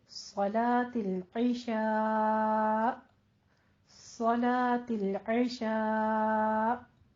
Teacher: और सलातुल इशा में वही आइन का मखरज ध्यान रखिएगा, इशा में 5 काउंट करते हुए वक्फ कर देना है। तो हमजा की साउंड जो होगा वो झटके के साथ थोड़ा सा वाज़े तौर पर सुनाई देना चाहिए